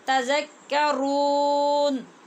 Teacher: نہیں رو نہیں کرنا، تذکرون. جی رو میں آواز ناک میں بالکل نہیں جائے گی، اور دال یہ سیٹی والی آواز کے ساتھ نہیں پڑھی جائے گی، نرمی والی دال ہے